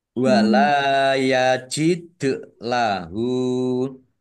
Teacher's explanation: lam fathah alif mat tobi'i panjang 2 harokat. Dal sukun bacaan kolkolah dibaca memantul.